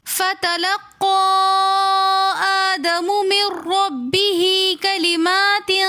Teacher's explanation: فتلقى میں مد منفصل ہو رہی ہے، تو اس لیے ہم نے فتلقى کو 3 الف کی مقدار کھینچ کر پڑھا۔ فتلقى آدم میں حمزے کے اوپر کھڑا زبر آنے کی وجہ سے مد منفصل بن رہی ہے، تو اس لیے ہم قاف کو بھی 3 الف کی مقدار کھینچنے کے بعد آدم کو بھی 1 الف کی مقدار کھینچ کر پڑھیں گے۔ · فتلقى آدم من ربه میں نون ساکن کے بعد را مشدد آ رہی ہے، تو میم کو را کے ساتھ ملا کر پڑھیں گے، یہاں پر غنہ نہیں کریں گے۔ را کے اوپر زبر ہونے کی وجہ سے ہم را کو موٹا پڑھیں گے